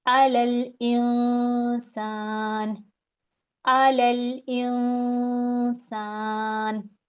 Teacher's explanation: نون پہ میں نے ہولڈ کرنا ہے، یہ غنہ کرنا ہے